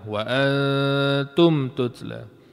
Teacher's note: Waantum tutla nun kosong. Dengung ke tak dengung? Dengung. Dengung pun samar-samar sahaja.